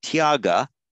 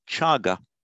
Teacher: whenever you get a tia together, it tends to become a ch in Pali